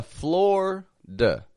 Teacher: that I in the middle totally drops out to just be a Florida.